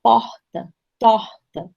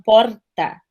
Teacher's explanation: Muitas vezes, quando eles falam rápido, gente, a gente chega a não ouvir, porque é um R que sai aqui do fundo da garganta sem qualquer tipo de obstáculo, certo? Fonético, ele sai livremente, quase como uma vogal, ó, porta, torta, certo?